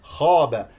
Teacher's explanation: الخاء مستعل من المرتبه الاولى لانها مفتوحه بعدها الف اي با با لا تقل با خا